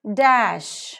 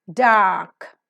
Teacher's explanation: d is voiced because the vocal cords are vibrating alveolar because the alveolar Ridge or the teeth Ridge is involved